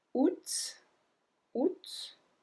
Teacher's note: And that's one of the words that we do not pronounce like the other one because technically we should not pronounce the T at the end, but we do pronounce it.